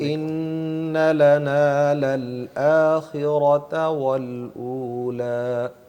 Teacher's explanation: را کو موٹا تو کیا آپ نے لیکن اس پر جھٹکا بھی دیا تو جھٹکا نہ دیں. آخرة والأولى آخرات نہیں، را کو خواہ بلند آواز میں نہ کریں، آخرة برابر سارے والأولى لفظوں کو برابر کر کے پڑھیں.